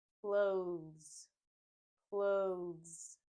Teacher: the s in this word makes the z sound clothes clothes I did skip the letters T and H but that's because the z sound is so strong in this word we basically skip it